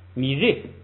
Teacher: 后边那个本来是re，然后呢后不升，它是升降调，不准升就只能降，一下变成4声了